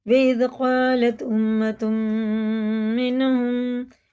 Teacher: تنوین کے بعد میم پہ شد ہے، یہ تشدید ہے تو یہ غنہ کر کے پڑھیں گے